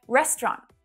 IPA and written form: 'rest (ə) rɒnt (RESTAURANT)